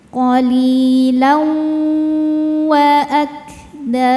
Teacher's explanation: Cara bacanya tanwin dimasukkan ke wau disertai bunyi dengung. Jadi di sini kita tahan dulu. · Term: idgham